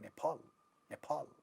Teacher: the second syllable is stressed, and in the beginning of the stressed syllable there is a pa sound, so they make it aspirated.